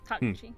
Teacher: it's generally no emphasis across the entire thing, ideally